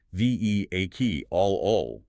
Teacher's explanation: While you might try to pronounce all four syllables, the standard British pronunciation is reduced to three.